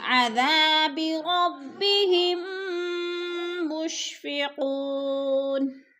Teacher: ربهم پہ پھر ادغام شفوی، میم ساکن کے بعد میم مشدد ہے تو ادغام کریں گے، غنہ کریں گے، ناک میں آواز بھی لے جائیں گے اور سختی سے بھی پڑھیں گے۔